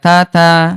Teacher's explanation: ta ada udara, huruf dal enggak ada udara